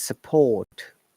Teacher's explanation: British English is non-rhotic. In most of the cases, R is not pronounced. And the T is strong, like the word support. You see, no R sound, but T is there.